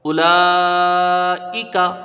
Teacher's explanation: حمزہ کے اوپر پیش ہے، جلدی پڑھا جائے گا، لام میں کھڑا زبر ہے، الف مدہ کے برابر ہے، یہ حرف مد ہے، سمجھ لو الف حرف مد ہے، حرف مد کے بعد حمزہ اسی کلمے میں ہے، مد متصل ہوگا، جس کی مقدار 2، 2.5، 4 الف ہے۔